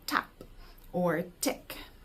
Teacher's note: our tongue is tapping the alveolar ridge on the top of our mouth, and then kind of the fingers tapping mimic that.